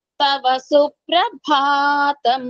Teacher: సుప్రభాతంలో ప కు రకారము భ మహాప్రాణము